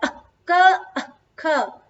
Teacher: ये क के पहले अर्ध विसर्ग है, इसलिए अह का नहीं कहते हैं, अह क अख, ऐसे अह पूरा उच्चारित नहीं होता है, अह क अख, ऐसे इसका उच्चारण होगा।